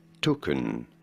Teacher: In British English, this is normally said as token. You do want to stress on the first syllable.